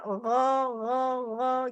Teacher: Gin itu ada di pangkal tenggorokan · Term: ghoin